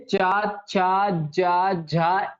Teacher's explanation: आपकी जीभ जो है ऊपर वाले हिस्से के तालू में टच होती होती है ना? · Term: तालव्य, तालु या तालव्य